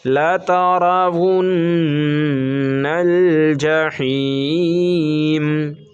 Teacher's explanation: نون پہ تشدید ہے، نون پہ غنہ کریں گے